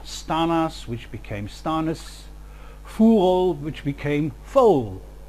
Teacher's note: The most influential change, as already said, was the weakening of vowels in unstressed syllables, all of them appearing as the central vowel schwa, and the examples we've listed here are stanas, which became stanis, furol, which became foal.